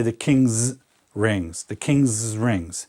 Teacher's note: And when we pronounce it, we just kind of extend the S. The second S here is implied.